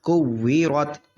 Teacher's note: را موٹا ہو گیا، را پہ زبر ہے